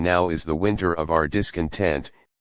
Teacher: in which the first iamb is reversed, now is stressed rather than is